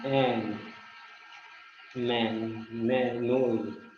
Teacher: जैसे एन, मैन, मैं, नोज, ये जो होते हैं ये नेसल्स नाक के थ्रू भी एयर को फ्लो करते हैं